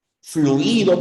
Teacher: vocal cerrada más vocal cerrada en este caso sí la segunda siempre es la tónica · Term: diptongos